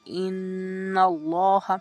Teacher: اسم جلالہ، جلالت اللہ کے لام سے پہلے اگر حرف مفتوح یا مضموم ہو تو اسے جلالت اللہ کا لام پور پڑھا جائے گا، جیسے ان اللہ۔